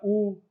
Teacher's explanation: जब हमारा मुंह गोल हो जाता है ना बोलने में, होंठ हमारे गोल हो जाते हैं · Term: वृत्ताकार